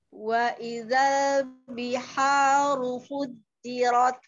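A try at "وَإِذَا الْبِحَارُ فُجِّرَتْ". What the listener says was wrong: Ujung lidahnya jangan mengkerut Kak, lebar. Wa idzal ya, ahsanti.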